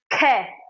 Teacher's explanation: जब हम दूसरे और चौथे वर्ण का उच्चारण करेंगे तो उसका उच्चारण करते समय हमारे मुख से वायु ज्यादा मात्रा में बाहर निकलेगी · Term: महाप्राण